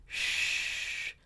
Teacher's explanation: It is causing friction, sh, but it's right between the ridge and the palate, the hard palate. So right on the back of the bump, sorry, right there where it's changing, right? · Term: alveopalatal